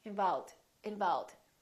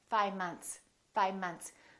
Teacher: when people speak really quickly the letter V tends to disappear